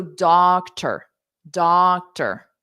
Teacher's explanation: in doctor you don't hear the vowel sound at all you just hear the r · there's a unstressed vowel of an e sound built in to the r sound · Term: R controlled vowel